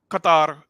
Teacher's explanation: Qatar with a rolling r at the end